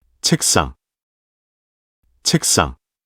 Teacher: the initial stop sound, shiat, of the second syllable becomes a fortis sound due to the influence of the final stop sound, giok, of the preceding syllable, resulting in the pronunciation, cheksang.